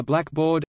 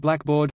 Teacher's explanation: The compound blackboard, on the other hand, though it may have started out historically as blackboard, now is stressed on only the first element, black.